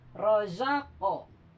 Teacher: Kan disukun, tapi seperti ada harokat gitu karena qalqalahnya. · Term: qalqalah sugro